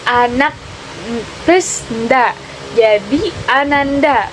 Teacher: hilangnya bunyi K pada proses pengimbuhan dengan akhiran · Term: pelepasan fonem